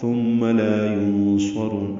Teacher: میم مشدد پہ غنہ ہے، لا الف مدہ ہے